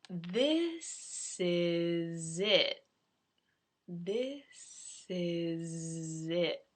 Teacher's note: You'll notice the first S is S, the second one is Z, and the final T in it is gone. It's not entirely gone.